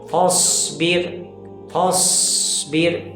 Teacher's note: سیٹی جیسی آواز تیزی سے نکل رہی ہے، تب یہ صاد مکمل اچھی طریقے سے ادا ہو رہا ہے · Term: صفت صفیر